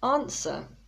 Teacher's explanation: people often say answer because of the w but the w is silent